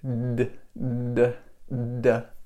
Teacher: This D is voiced, d, d, d. My voice is going on, and my tongue is not touching my teeth.